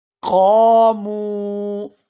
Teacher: یہاں قاف کو الف مدہ کی وجہ سے کھینچ کر ادا کریں گے، اور آگے میم کو واو مدہ کی وجہ سے کھینچ کر ادا کیا جائے گا